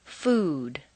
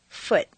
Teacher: a strong non-reducible sound ooh that is made far forward in the mouth with the lips fully rounded with the reduced uh sound in the second and fourth columns